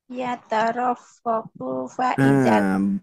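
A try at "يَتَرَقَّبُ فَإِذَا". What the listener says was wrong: Bu-nya juga jangan terlalu panjang Bu ya.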